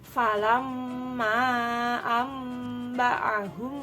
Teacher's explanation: cara membacanya mendengung ditekan dua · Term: Ikfa Syafawi